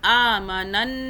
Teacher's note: آمنن، یہ جو ن ہم نے کیا نا، اس لیے کیا کہ ہم نے اس آم نون زبر پچھلے والے نون سے ملایا اگلے نون کو، اور ایک کیونکہ اس نون مشدد کی 2 مرتبہ آواز بنائیں گے ہم۔ ہر وہ حرف جس کے اوپر مشدد ہو، تشدید ہو، تو اس کی آواز 2 مرتبہ بنتی ہے، ایک پچھلے والے سے مل کے اس نون کی ایک آواز چھپی بھی ہو جائے گی، آدھی ہو جائے گی، اور دوسری زبر سے بنے گی۔